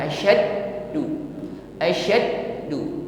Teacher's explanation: huruf Dal yang bertasdid lebih kuat sifat syidahnya ya jadi ketika menekan huruf Dal ini seolah-olah suara kita ini terputus ya karena di situ tertahan asadu asadu memang tertahan di situ